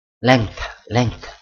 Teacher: Ini seperti ada k padahal tidak ada ya. As the speaker move from the voice velar nasal to the voiceless interdental dental fricative, they may produce k. · If you listen to yourself say length, you may hear an insert k. Nah, itu ada penamaan seperti huruf k ya, huruf k di sini.